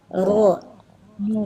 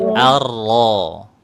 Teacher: huruf ro itu nggak perlu dikurang-kurangi getarannya ya, biarkan aja dia